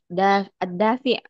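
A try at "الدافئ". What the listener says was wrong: Nah, dafi. Bukan ain tapi hamzah. Nah, dafi bukan dafi'.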